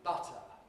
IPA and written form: ˈbʌtə (butter)